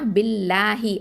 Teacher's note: அந்த லாம் வந்து இங்கே வந்து என்ன ஓதணும்னா தர்க்கைக்காக தான் ஓதணும், அதாவது மெல்லினமாக ஓதணும். ஏன் அப்படின்னு பார்த்தீங்கன்னா, அதுக்கு அல்லாஹுங்கிற வார்த்தைக்கு முன்னாடி கஸ்ரா பயன்படுத்தப்பட்டிருக்குது.